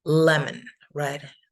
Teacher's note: And that is going to tell us that it is pronounced lemon, right? Le is going to be stronger. It's going to have the stress.